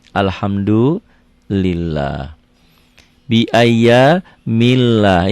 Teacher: Dibaca tipis berbunyi A Allah karena sebelumnya berbaris di bawah